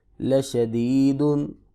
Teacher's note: وقف کی صورت میں دال پہ قلقلہ ہوگا